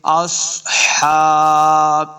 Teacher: ہا کو پڑھتے ہوئے اس بات کا خیال رکھنا ہے کہ خا اور ہا کا ساؤنڈ نہیں آنا چاہیے، بلکہ ہا کا اپنا الگ مخرج ہے، اس کو تلفظ سے پڑھنا ہے۔